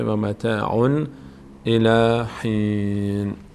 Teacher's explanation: بعد از تنوین یکی از حروف حلقه قرار گرفته از مخرج خودش ادا میشه